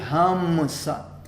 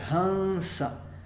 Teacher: M é quando você fecha os lábios e Anusvara é quando você apenas nasaliza o som da vogal. Então, nesse caso, a gente tem o A seguido do Anusvara e aí fica Han.